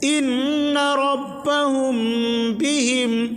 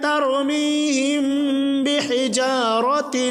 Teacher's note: میم ساکن کے بعد با آئے تو غنہ کے ساتھ اخفاء ہوگا، اوپر غنہ ہوگا، نیچے والے میں اخفاء ہوگا۔ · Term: اخفاء شفوی